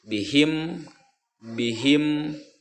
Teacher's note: karena mim itu adalah makhraj hurufnya antara dua bibir, ya, bibir atas dan bibir bawah. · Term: idhar safawi